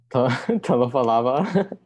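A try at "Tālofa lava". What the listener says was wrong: Again, with the remember to elongate the A on talofa. Talofa. The easy way to remember it is that you're not saying one A.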